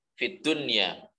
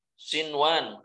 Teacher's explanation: nun sukun dengan wawu dalam satu kalimat, maka di sini tidak boleh dibaca idgham, tidak dileburkan, tetapi harus dibaca izhar